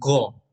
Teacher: आप ध्यान से अगर ऐसा अनुभव कीजिएगा कि ग बोलिए तो वहां पे कंठ में जोर पड़ता है, ठीक है। तो ये इसका आंसर क्या हो जाएगा, कंठ हो जाएगा।